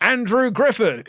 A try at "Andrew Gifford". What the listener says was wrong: Andrew Gifford. You said Grifford. That rhymes with Clifford, you see.